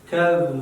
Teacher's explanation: ذال کې د ژبه لاندې غاښو سره ونه لګېږي ځکه چې ذال کې موږ ویلو ژبه باید پاس غاښو سره ولګېږي